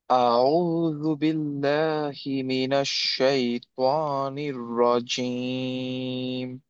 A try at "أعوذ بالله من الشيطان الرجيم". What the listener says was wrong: একটু খালি কারেকশন হচ্ছে, আইনটা আরেকটু বেটার হতে হবে, মাখরাজটা, তয়ের হেভিনেসটা একটু কম আছে। হ্যাঁ, এটা ইনশাআল্লাহ তয়ের হেভিনেসটার জন্য যেটা করবা, যে আম, যেই মাখরাজটায়, ওইটাকে তোমার টাংটা আরেকটু বেশি পার্ট লাগাতে হবে। হ্যাঁ, আরেকটু প্রেস করতে হবে, একটু শক্ত করে লাগাবা। ত, ত নিউ, ত নিউ, এরকম হবে।